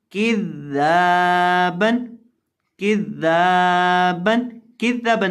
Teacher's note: یہاں ذال کو لمبا کریں گے ایک الف کے برابر